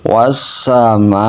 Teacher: mim fathah mahnya dibaca panjang 4 atau 5 harokat ukuran panjangnya dan disambung ke hamzah. Dalam ilmu tajwidnya hukum bacanya mad wajib mutasil.